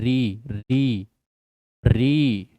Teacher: जो ऋ है यह स्वर का उच्चारण नहीं दे रही है। स्वर की साउंड नहीं दे रही है।